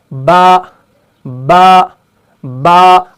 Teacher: जब दोनों होंठों का गीला वाला हिस्सा आपस में मिल जाता है तब जाके हरफ बा अदा होता है। जब दोनों होंठों का गीला वाला हिस्सा तर वाला हिस्सा आपस में मिल जाता है तब जाके हरफ बा अदा होता है।